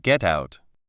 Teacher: The t from get links to the oo of out.